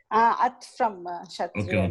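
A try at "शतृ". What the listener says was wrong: I'm hearing is an at. The Murdanya Takara.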